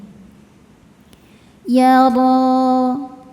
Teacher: ditebalkan dengan cara mengangkat pangkal lidah kita ro sehingga menghasilkan bunyi yang penuh di mulut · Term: tafkhim